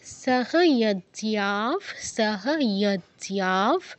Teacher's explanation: সহ যজ্ঞাফ ইয়তে মানে ইয়টা স্পষ্ট বোঝা যেতে হবে। সহ যজ্ঞাফ জিয়াতে দীর্ঘ করে তারপর বিসর্গে যাব